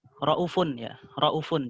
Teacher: Pada kata raufun itu Syu'bah membacanya dengan hadful waw ya. Dengan membuang huruf wawnya.